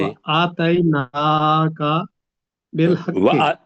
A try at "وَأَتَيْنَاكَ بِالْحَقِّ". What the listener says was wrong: اس کو الف کو چھوٹا ہی رکھیں. وَأَتَيْنَاكَ،